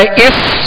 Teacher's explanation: حمزہ صاد زیر اس. صاد میں سیٹی کی آواز پیدا ہوگی اور صاد کو پر پڑھیں گے اور صاد ساکن ہے، سکون ہلنے نہ پائے